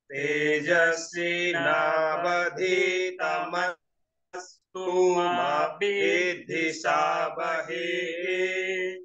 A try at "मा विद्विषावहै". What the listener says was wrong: विद्धि नहीं, विद्वी, विद्वी।